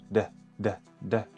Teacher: la consonante D es un sonido plosivo. Vamos a hacer un golpe rápidamente en el paladar para luego liberar el aire.